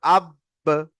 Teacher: এটি হরুফে কলকলা। তাই এটি পড়ার সময় মাখরাজে ধাক্কা লাগে আলাদা হয়ে যাবে।